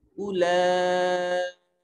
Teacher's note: यहाँ ये जो लाम है इसके ऊपर बड़ी मद है और खड़ी ज़बर भी है, इसको सबसे ज़्यादा लंबा करेंगे। उलाइका, यहाँ ये जो हमजा है इसको ये मद्दा नहीं है, इसको ज़्यादा खींचेंगे नहीं।